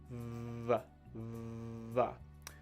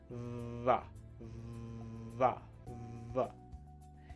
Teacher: the V sound is another one of those sounds that you can feel the vibration, right? You can feel the movement.